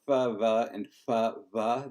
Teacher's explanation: We essentially have a fortis lentis distinction between fa va and fa va, that is the labiodental and then bilabial. And essentially, we're going to preserve that in this situation as best we can.